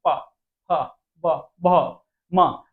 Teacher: ओष्ठ क्या हो रहे हैं एक में मिल रहे हैं